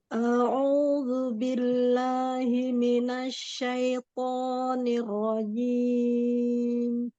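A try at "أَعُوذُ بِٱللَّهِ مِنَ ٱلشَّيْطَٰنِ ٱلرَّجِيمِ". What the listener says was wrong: Hati-hati syai, ya, jangan syaito. Syaito. To-nya mau lebih angkat lagi istilahnya. Asya dan dorongan tafasyinya. Asyaitonir rajim.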